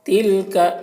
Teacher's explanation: تلک تا کو باریک پڑھیں گے، کاف کو بھی باریک پڑھیں گے